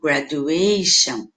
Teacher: Esse gra não fica tão alto, não fica graduation, fica graduation.